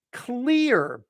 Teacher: that's a high e going to a final R